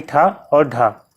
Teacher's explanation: ठा और ढा में देख रहे हैं जो मूर्धन्य भी हो महाप्राण भी हो